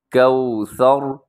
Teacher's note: آخر میں 3 نقطے والا جو سا ہے اس میں سیٹی نہیں ہوتی، کوثر غلط ہو جائے گا، کوثر۔ آخر میں را موٹا کیجیے گا، سا میں سیٹی نہیں ہے اور را میں اپنے اس کو موٹا کرنا ہے، کیونکہ آپ اس پر وقف کر رہے ہیں۔